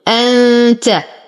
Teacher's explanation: نون ساكنة وبعدها التاء في كلمة واحدة فالحكم إخفاء حقيقي مع غنة كاملة